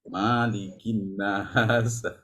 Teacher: Wajibul gunnah nun bertasydid itu wajibul gunnah. Malikin nas jangan sampai ma-nya dipanjangkan.